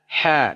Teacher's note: Ha dari tengah tenggorokan.